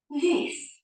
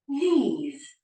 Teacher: that very short I or the E the longer stretching of the e sound